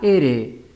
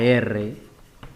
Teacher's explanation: vibrantes porque el aire al salir hace vibrar a la lengua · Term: consonantes vibrantes